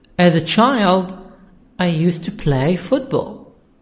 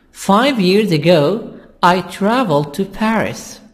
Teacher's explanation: so the time expressions will make the sound higher but if we have sentences after this the sound is down at the end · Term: intonation